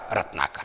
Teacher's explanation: रत्न में न देखिए अ है, इधर आ है, अ आ कंठ से निकलता है, दोनों सवर्णी हैं, दोनों मिलकर के अपना बड़ा रूप आ ले लेंगे